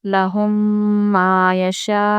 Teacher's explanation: ہم میم ساکن کے بعد میم آیا ہے ادغام شفوی اس لیے اس کو غنے کے ساتھ پڑھیں گے